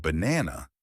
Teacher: in the word banana, the stress is on the second part. If you stress the wrong part, the word may sound wrong. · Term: Word stress, word stress